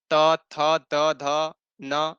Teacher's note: आप जब बोलेंगे तो उसमें दांत का स्पर्श होता है जिह्वा से